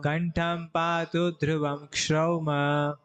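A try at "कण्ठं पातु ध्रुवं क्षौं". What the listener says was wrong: नहीं नहीं हलंत है इसमें। कंठम पातु ध्रुवम श्रम,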